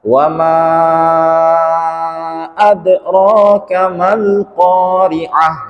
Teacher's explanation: Ketika di situ ada lam sukun, maka alif yang 2 ini kalah alias tidak dianggap. Jangan kita panjangkan, mentang-mentang di sini kan itu ada alif, berarti 2 ayunan kan, 2 alif. · Jadi dia di sini Mad tabi'i ketika bertemu dengan huruf hamzah, maka dia disebut mad jaiz munfasil. Cara membacanya dipanjangkan selama 4 harokat atau 2 ayunan.